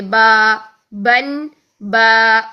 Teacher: وقف کیا تو با، یعنی 2 سیکنڈ کے لیے لمبا کر کے پھر ہم نے پڑھنا ہے